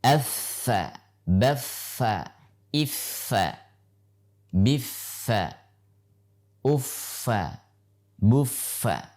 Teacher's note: Fa dalam keadaan tasydid harus tetap dominan dalam keadaan menjaga hams atau nafas yang pada saat diucapkan harus tampak.